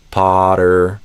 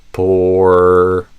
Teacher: For Potter versus porter, you could think of it as a open O versus a closed O, roughly.